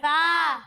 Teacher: ये सा जब आप इसकी अदायगी करेंगे तो इसमें सीटी की आवाज नहीं आएगी